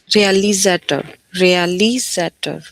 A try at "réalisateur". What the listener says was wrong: We never use this sound t in French. Never. simply saying that, yeah, French people don't know this t sound. So whenever you say t, it simply means that you are not a native. You are not a person from France. Réalisateur.